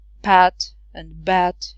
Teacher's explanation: speakers of Arabic don't have P sound, so pat and bat is the same for them